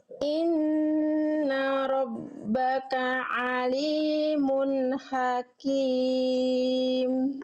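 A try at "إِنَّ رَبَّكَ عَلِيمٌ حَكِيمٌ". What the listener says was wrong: Tinggal ditegaskan lagi Bunda H kecilnya. Ha, hakim. H-nya kurang tegas. Jadi bunyi H-nya itu kerasa nanggung di sini.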